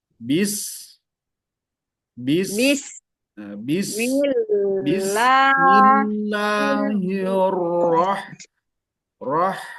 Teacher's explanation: huruf sininnya dan huruf hannya ketika sukun alirkan udaranya karena memiliki Bu Hames